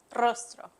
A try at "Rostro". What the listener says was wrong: You gotta roll the R's.